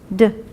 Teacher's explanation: If you feel a vibration, that's a voice sound when you say D. It's an unvoiced sound if you don't.